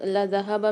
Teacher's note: ذال کو نرمی کے ساتھ ادا کرنا ہے، ہا کو بھاری آواز کے ساتھ پڑھنا ہے کیونکہ 2 چشمی والی ہا ہے۔